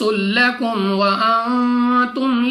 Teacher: میم ساکن کے بعد واو بغیر غنہ کے پڑھنا ہے · نون ساکن کے بعد تا حروف اخفا میں سے ہے. اخفا کا قاعدہ ہے غنہ کر کے پڑھنا ہے.